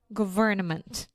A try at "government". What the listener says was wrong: Yeah, just remember the N in government. We don't have to say that. So government.